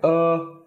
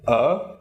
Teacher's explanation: is just pronounced flat like uh and then er is pronounced the same but with a rising tone